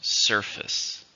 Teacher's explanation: How many syllables are in surface? 2, stress on the first.